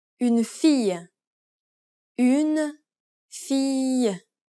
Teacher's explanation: When a phrase forms a noun group, that is, when an article is combined with a noun, you'll need to raise the pitch on the last syllable.